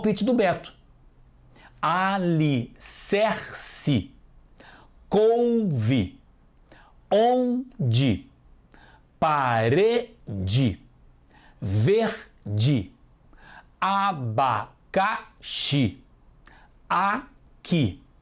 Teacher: Todas têm som de i no final